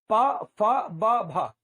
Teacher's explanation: देखिए, ये आपका होठ है, ये होठ है ऊपर वाला और ये नीचे वाला। दोनों होठ आकर चिपक जाएंगे ऐसे, और फिर जब होठ खुलेंगे तो मुंह से हवा बाहर निकलेगी